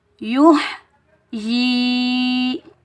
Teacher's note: یا کو ہا کے، یا کے اوپر پیش، یا کو ہا کے ساتھ ملائیں گے یو. یا کے نیچے زیر، آگے یائے ساکن ہے، یہ یائے مدہ ہے، اس کو ہم ایک الف کی مقدار کھینچ کر ادا کریں گے